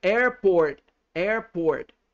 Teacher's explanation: com o t né lá na no céu da boca mas batendo bem devagarzinho